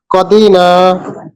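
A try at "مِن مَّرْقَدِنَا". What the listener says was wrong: এই যে কদি এক টান হয়ে গেল, টান হবে না। মিম্মার কদিনা, মিম মারকাদিনা হাযা কদিনা মিম মারকাদিনা মিম মারকাদিনা হাযা।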